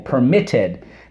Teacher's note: have one vowel we have one consonant at the end and the accent is on the second syllable permitted that's the two one one to rule that is rule